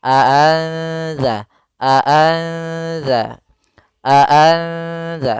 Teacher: tapi disamarkan ke huruf setelahnya maka di sini cara membacanya adalah nunnya disamarkan kepada huruf Dal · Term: ikhfa